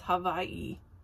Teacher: because W's are pronounced with a V so it's Hawaii